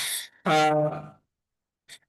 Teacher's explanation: তারপরে আমাদের যে হরফটা সেটা হচ্ছে হা। হা, হা এর উচ্চারণটা একদম গলা চেপে আদায় হবে